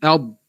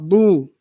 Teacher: Kalau muncung untuk dad yang mati tak tepat. Sebab dad mati tak dimuncungkan.